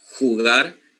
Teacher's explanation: So it's more like there's a friction in the uvula that we don't have in our Panamanian dialect. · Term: jota